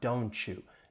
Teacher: Of course, you may hear people pronounce those individual words, but once again, assimilation may occur. This time, if the T and Y blend together, you get more of a ch sound.